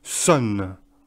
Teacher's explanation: C'est un mix entre le O et le E, un petit peu des deux. Sun. Ça ressemble presque au son E, mais c'est pas le même person.